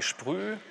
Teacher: Dann haben Sie diesen komischen Abfall vom Sch zum P. Aber dann geht es schön nach oben mit der Sonorität. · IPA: ʃ p ʁ yː